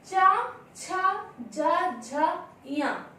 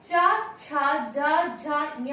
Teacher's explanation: जब हम चा, छा, जा, झा, या बोलते हैं, हमारी जिह्वा तालु का स्पर्श करती है, इसलिए इसका उच्चारण स्थान हुआ तालु।